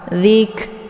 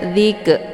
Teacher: Kaf ini adalah salah satu daripada huruf yang sifatnya Hamas maka Hamas itu ada desis angin yang agak samar samar Zik ya Jangan dibaca diik keluar bunyi ke itu bacaan salah